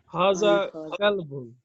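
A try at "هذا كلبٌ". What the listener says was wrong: ये कुत्ता है, बहुत अच्छा।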